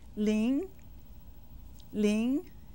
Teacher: Ling is said with the second tone.